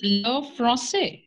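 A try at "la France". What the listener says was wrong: have to pronounce R.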